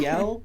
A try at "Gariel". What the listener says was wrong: It's Gariel. There's no D. Well, Gadriel is Lord of the Rings. This is Gariel. There's no D. Same basic letters, just no D.